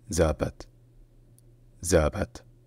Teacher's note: Donc dites-vous que c'est presque Zapat, sauf que le deuxième A est plus relâché, plus centralisé, et aussi également qu'il y a l'accent tonique sur la première syllabe. Donc c'est Zapat.